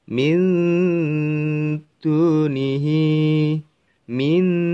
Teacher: membaca huruf nun sukun, min, lidah kita sudah berada persiapan membaca huruf dal